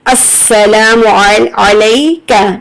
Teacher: کاف کو ہمیشہ پتلا پڑھیں، یہ قوف نہیں ہے یہ کاف ہے